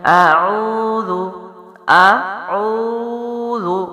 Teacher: آ جو ہے وہ باریک ہے، عین حلق سے، واو ہونٹوں سے، اور زال نرمی کے ساتھ منہ کے اگلے حصے سے ہے · ہونٹ گول ہوں گے، ٹھیک ہے، اور عین کی ادائیگی پیچھے سے آپ ہونٹوں کی جانب لے کے آئیں گے، اور واو مد ہے تو لمبا بھی ہوگا